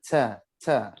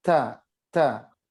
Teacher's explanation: Ada udara dan padat. Padatnya dari syiddah.